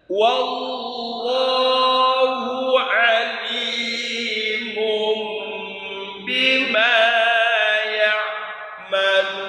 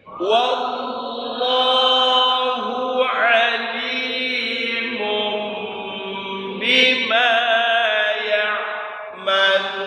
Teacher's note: kalau kita bertemu dengan kata Allah itu intonasinya dinaikin. Jadi kalau yang tadi misalnya datar, jadi bertemu dengan Allah itu nadanya dinaikin, stressing ya, ditinggikan, distressingkan di sana.